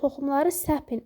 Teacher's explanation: toxumları səpin əmr eləyəndə vurğu düşür əvvələ